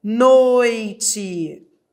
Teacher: Da vogal para a semivogal. Ditongo decrescente.